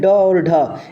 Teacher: इनके उच्चारण में जीभ ऊपर उठकर मूर्धा को स्पर्श करती हुई त्वरित गति से नीचे गिरती है इसी कारण इन्हें उत्क्षिप्त व्यंजन कहा जाता है इसी कारण इन्हें